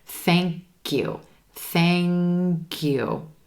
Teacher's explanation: that k at the end of thank links over and joins with the word you making it sound like cue